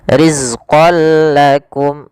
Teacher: tanwinnya masukkan langsung kepada huruf lam dan tidak ditahan. Maka bila gunnah artinya tidak ditahan. · ro di sini ketemu dengan huruf lam maka cara membacanya yaitu tanwinnya masukkan langsung kepada huruf lam dan tidak ditahan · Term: idgham bila gunnah, idgam bilagunah